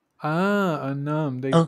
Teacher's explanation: They pronounce that N. Un. So like a linking N, I guess they call that.